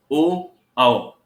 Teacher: ओ, औ बोलते समय कंठ और ओष्ठ दोनों ही सक्रिय हैं, इसलिए इसका उच्चारण स्थान कंठ और ओष्ठ है। कंठोष्ठ उच्चारण स्थान बोला जाता है इनका।